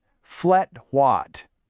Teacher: The A in flat becomes more of an S sound, so it's flet. And the I in white gets really short, sounding more like watt.